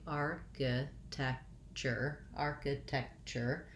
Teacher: looking at the word architecture i still have first syllable stress